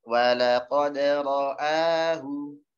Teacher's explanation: Hamzahnya jelas dan jangan tebal.